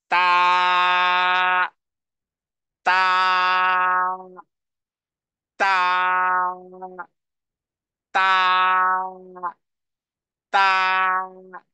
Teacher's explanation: এরপরে তৃতীয় অক্ষর আমি 7 বার পাঠ করব, তবে সেটার উচ্চারণ হলো যে জিহ্বার আগাকে সামনের দুই দাঁতের গোড়ার সাথে লাগিয়ে তারপরে দুই হারাকা পরিমাণ আমি টেনে পড়ব